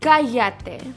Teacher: the double L is pronounced like a Y.